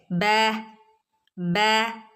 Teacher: ബിന്റെ sound വരുന്നത് രണ്ട് ചുണ്ടുകൾ കൂടിച്ചേർന്നിട്ടാണ് ബ എന്നുള്ള സൗണ്ട് പുറത്തുവരുന്നത്